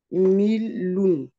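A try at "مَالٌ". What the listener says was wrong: Attention, là au début c'est un fatha.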